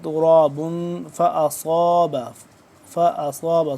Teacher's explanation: صاد کو موٹا کر کے پڑھیں گے